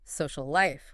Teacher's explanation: We just say social life with one continuous L sound bridging the words. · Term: twin sounds